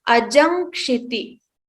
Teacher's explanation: what comes before ka, when we join two words together, is this letter nga. So we remove this makara and we chant it as ajam kshiti.